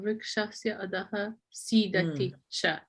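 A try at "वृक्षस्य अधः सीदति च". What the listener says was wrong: Okay, very nice.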